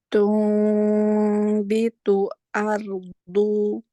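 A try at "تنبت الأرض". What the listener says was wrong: lebih tipis lagi. Tumbitul ardu. Lebih tipis lagi?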